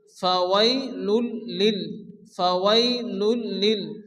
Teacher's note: সেখানে কি হয় ইদগামে বেলা গুন্না বা ইদগামে তাম হয় এখানে কোনো গুন্না হবে না তাড়াতাড়ি করে মিলিয়ে পড়তে হবে